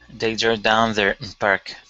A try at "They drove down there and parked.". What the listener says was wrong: Okay, parked. Give me that ed ending.